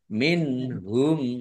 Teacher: nun sukun bertemu dengan huruf huruf ha bacaan izhar dibaca jelas